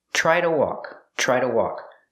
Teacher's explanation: The TR makes a ch sound like chicken, plus the R, try. Try to. To is pronounced duh.